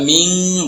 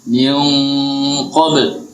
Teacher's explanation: Qaf itu huruf tebal, jadi dengungannya ikut tebal. Miung, jadi jangan ming langsung tebal. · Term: Tebal dengungan